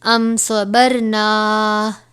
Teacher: یہاں پر میم ساکن کے بعد حرف صاد آیا ہے تو یہاں پر اظہار شفوی یعنی غنہ نہیں کرنا